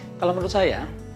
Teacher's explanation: Kalau menurut saya, sebelum saya berbicara tadi ada senyapan, kemudian ada kalimat, berhenti di situ, tapi Anda akan merasakan bahwa intonasi yang saya gunakan tadi belum menunjukkan bahwa saya selesai berbicara